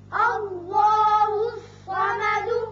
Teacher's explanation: الف پر زبر ہے لہذا اس میں اللہ کا لام پر کر کے پڑھا جائے گا. اسی طرح صاد حروف مستعلیہ میں سے ہے، یہ پر ہوگا. · صاد حروف مستعلیہ میں سے ہے، یہ پر ہوگا. اب دال کے اوپر پیش ہے، آیت ختم ہونے کی وجہ ساکن کریں گے اور سکون کی وجہ سے صفت قلقلہ ادا ہوگی.